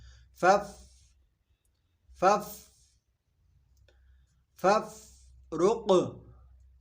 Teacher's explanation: بعض لوگ فف یہ غلطی کرتے ہیں چونکہ فا حرف قلقلہ نہیں ہے، فا کو ہم نے ساکن رکھنا ہے